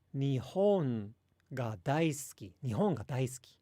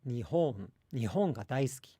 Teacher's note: there's like a distinct low, high, low within the word Nihon